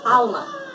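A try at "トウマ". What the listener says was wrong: It's not Talma. That would be with an A. We got a correction in the comments that it was Toma. No, Talma, Toma, Tuma. Those are three different vowel sounds. We've been saying Tuma. The person in the comments said Toma.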